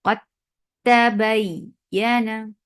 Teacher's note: तो इसके बावजूद कि ये सारी कॉम्बिनेशंस हो रही हैं, लेकिन दाल और ता, दाल के बाद ता का आना इदगाम कामिल को दावत देता है। तो यहाँ इजहार नहीं बल्कि इदगाम कामिल हो जाएगा।